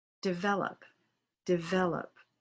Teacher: you touch your top teeth to your bottom lip. That the V sound requires the use of your voice, and that if you don't use your voice, it becomes more of an F sound.